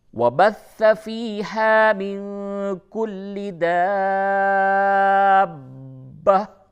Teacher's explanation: اس کی ادائیگی میں خاص طور سے یہ با مشدد ہے، با پہ تشدید ہے، تو دو با اور مد کے ساتھ ادا کرنا ہے